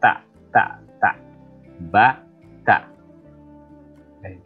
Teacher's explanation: jadi ujung lidah menempel di atas gigi seri ya antara gusi dan pertama kali tumbuhnya gigi seri atas tak